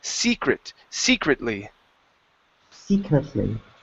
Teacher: this word here is pronounced secretly with the stress at the beginning